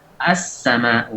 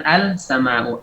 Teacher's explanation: Kemudian as-sama'u, asalnya al-sama'u, al-sama'u, karena mengucapkan lam izhar di sini sulit, maka lamnya diidghamkan. Jadi as-sama'u, bukan al-sama'u.